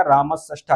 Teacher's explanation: दंत सकार के स्थान पर मूर्धन्य सकार हो जाता है